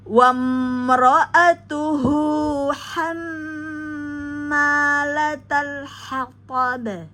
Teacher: pada ba yang disukunkan di akhir waqaf maka menjadi qalqalah kubro dipantulkan